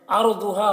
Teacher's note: را کو پر پڑھنا ہے، ضاد کو بھی پر پڑھنا ہے